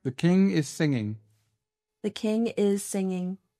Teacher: Vous voyez, le G à la fin, vous ne le prononcez pas. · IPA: /ŋ/